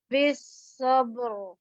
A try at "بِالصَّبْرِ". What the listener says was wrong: بس کوشش کرنی ہے درمیان میں جو با ہے وہ موٹا نہ ہو.